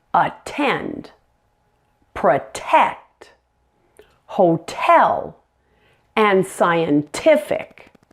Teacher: each of these words had a hard T in it rather than a flap and that's because the vowel sound after that T was a stressed vowel